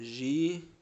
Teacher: A sílaba tônica é a penúltima, ela é uma paroxítona e ela tem um ditongo aberto.